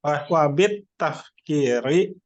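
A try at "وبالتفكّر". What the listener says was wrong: Wabit tafakuri jangan tafkir.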